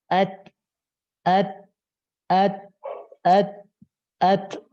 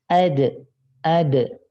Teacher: Ada hamas, udara yang mengalir. Tapi kalau dal, dia tidak ada udara yang mengalir